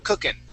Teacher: when I say cooking, I do not pronounce the G at the end, and it's more of an N sound instead of cooking.